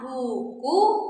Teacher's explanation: Nah, selanjutnya kita punya bunyi vokal U. U tinggi atas belakang ya